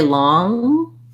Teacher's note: when i say long i have to leave my tongue up and stop my voice if i let my tongue come down long long you'll hear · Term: ng sound